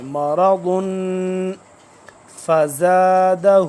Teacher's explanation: [संगीत] यहां पे इफा होगा मरगुन क्योंकि तनवीन आ गया ना तनवीन जब आ जाए तो फिर भी इफा होगा यानी कि नाक में आवाज को लेके जाएंगे